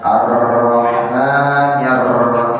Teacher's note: Mentaklirkan huruf ro secara berlebihan.